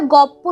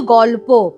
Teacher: পরের পটার প্রভাবে আগের লটা প হয়ে গেছে